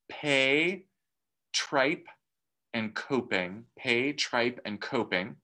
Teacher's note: we'll get this puff of air and so this aspiration